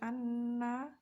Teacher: Di dalam bacaan anna tersebut terdapat bacaan gunnah musyaddadah, yaitu nun bertasydid yang wajib dibaca mendengung